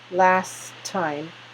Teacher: But when we speak it last time, the T, we don't release it. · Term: holding